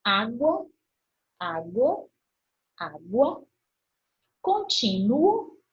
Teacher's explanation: É formado por semivogal, menorzinha, mais fraquinha, e depois eu vou para a vogal, que é a mais forte. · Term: crescente